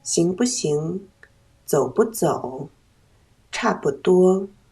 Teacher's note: 在词语中间读轻声不